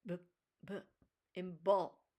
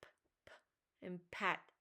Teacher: Some consonants are voiced like b, b and ball, while others are voiceless like p, p and pat